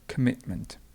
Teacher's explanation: we have commitment, so the stress goes in the middle